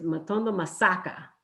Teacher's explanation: you need to hit that word on the syllable where your voice needs to be rising so in matondo it's the second syllable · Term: tone